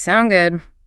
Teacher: that little upward flick at the end, the question intonation